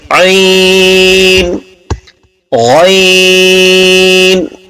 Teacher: गैन ये हमारे आखिर हलक से निकलता है और आइन हमारे दरमियाने हलक से निकलता है।